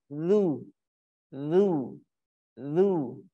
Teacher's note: huruf zal itu berada di ujung lidah kita, bertemu dengan ujung gigi seri bawah.